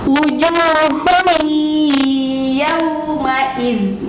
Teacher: harus dibaca, diidghamkan dan disertai dengan gunnah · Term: idgham bigunnah